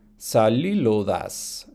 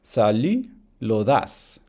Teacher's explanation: In between vowels, we have a regular sound change that turns voiceless L into voiced L in between vowels. I think I already said that.